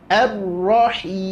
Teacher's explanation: Ha kembali baris bawah, kemudian di akhir lagi huruf mim, ada sifat tawasud dari huruf mim. Jadi tidak boleh ditahan langsung, tak boleh tertahan, karena nanti akan berlawanan sifatnya.